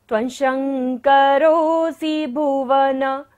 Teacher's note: तालव्य श है, तालु से हमें उच्चारण करना है।